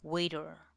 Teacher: The 'r' sound takes over that you hardly get to hear the 'e' vowel sound